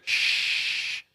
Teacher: So the sheen spreads from the middle of the tongue. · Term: At-tafashi